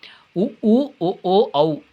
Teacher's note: வாய் திறக்கும் முயற்சியுடன் இதல்களை குவிப்பதால் பிறக்கின்றன